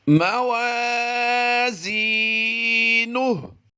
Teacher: ماوا، الف مدہ کرتے ہوئے لمبا کر دیا، زی، یا مدہ کرتے ہوئے لمبا کر دیا۔ نون پیش نو کو ہم نے لمبا نہیں کرنا بلکہ ہا ساکن بنا دینا ہے، الٹا پیش کو ہم نے جزم سے کنورٹ کر دیا تو نون ہا پیش نوح بن جائے گا۔